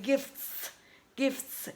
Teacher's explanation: your friend dropped the T sound naturally because it was very uncomfortable to pronounce T in here it's very a lot of movement in your mouth